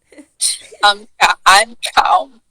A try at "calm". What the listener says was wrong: Essa é coisa da gente mesmo brasileira, viu? A maioria passa por essa fase, porque a gente não vê uma vogal, a gente quer botar um som de vogal aí, né? Normalmente se calme. Isso é calm. É, porque tem mania de fazer isso. Se não tem, aí quer botar um som de i no final da consoante.